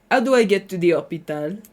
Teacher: So if you want to do a French accent, drop your H's.